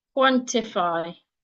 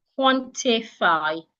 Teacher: in the word quantify, the I is reduced into A. Quantify instead of a schwa.